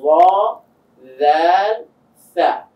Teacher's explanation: ওয়াটা একটু মোটা করে উচ্চারণ করছি, জালটা তার থেকে একটু চিকন করে, সা যখন বলছি পুরোটাই চিকন হয়ে আসছে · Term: সিফাত